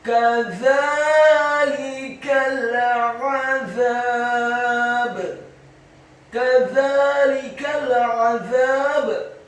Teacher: Huruf kafnya dibaca tipis, fathah 1 harokat. Huruf zanya dibaca tipis, tarqiq. Lidahnya agak keluar sedikit, fathah 2 harokat karena setelahnya ada alif. Huruf lamnya dibaca tipis, kasrah 1 harokat. · Kata azab, huruf ainnya ditekankan, keluar dari tenggorokan bagian tengah, fathah 1 harokat. Huruf zanya dibaca tipis, tarqiq.